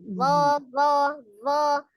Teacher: Ujung lidahnya ada di ujung gigi seri bagian atas.